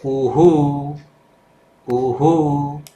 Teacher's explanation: એનું કંઠ ઉચ્ચારણ સ્થાન છે કંઠ કંઠ હના જેવું ઉચ્ચારણ થાય છે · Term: વિસર્ગ